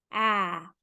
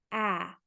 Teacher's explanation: We make the sound ah. The tongue is down here. Ah. Everything is very open. Ah. I drop my jaw. Ah. Just like if I'm taking a bite of an apple.